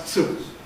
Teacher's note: So Japanese has a rule changing plosives to affricates before high vowels.